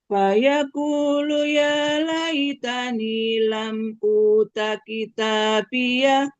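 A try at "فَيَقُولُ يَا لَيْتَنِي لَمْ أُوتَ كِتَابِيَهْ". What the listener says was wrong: masyaallah ya sudah mantap lumayan ya luar biasa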